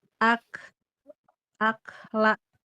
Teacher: tidak mantul dan tidak ngalir. Ak la dia cuma nafas aja.